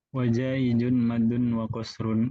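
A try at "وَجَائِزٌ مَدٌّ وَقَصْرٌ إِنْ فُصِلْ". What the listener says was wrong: Jaiz, soal diperbaiki makhrajnya. Jaizun bukan jaijun. Jaizun za.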